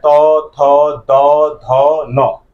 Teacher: त का त वर्ग का उच्चारण जो है दंत से होता है इसलिए इसको दंत वर्ण भी जो है कहा जाता है उसके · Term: दंत्य वर्ण